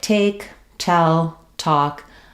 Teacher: if I'm saying the T at the start of a word in American English, it's called an aspirated T. · if I'm saying a word like take, tell, talk, I need what's called the aspirated T